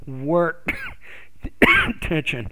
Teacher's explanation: actually put stress on that first noun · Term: word stress